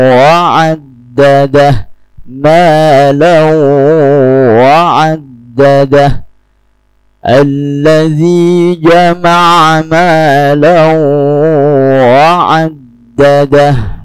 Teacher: Itu dilakukan dengan memasukkan huruf pertama ke dalam huruf berikutnya. Dalam hal ini, tanwin langsung masuk ke huruf waw. Mau mau dibaca dengan bunyi sengau. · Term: Idgham bighunnah